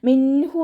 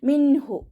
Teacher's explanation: വന്നിട്ടുണ്ട് നൂൻ സാക്കിനയെ വ്യക്തമാക്കി മണിക്കാതെ ഓതികൊടുക്കാർ ചെയ്തിട്ട് ഓതുട്ടോ മിൻഹു മണിച്ചിട്ട് ഓതരുത് മിൻഹു മണിക്കാതെ വ്യക്തമാക്കിയിട്ട് ഓതുട്ടോ